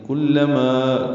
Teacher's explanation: کلما کاف لام جلدی پڑھیں گے، ما الف مدہ ہے، دو حرکات لمبا کریں گے